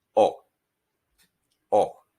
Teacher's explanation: we take out that uh sound at the end of the o in english you do not round your lips ending in an